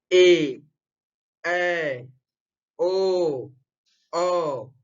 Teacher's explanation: ये सभी हमारे संयुक्त स्वर हैं। इनमें 2 मात्रा से अधिक का समय लगता है। इनका उच्चारण करने में हमें बहुत अधिक समय लग जाता है, इसीलिए हम इन्हें संयुक्त स्वर के नाम से जानते हैं।